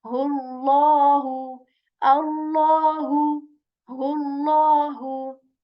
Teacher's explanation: So I'm again making this Allah's name sound heavy.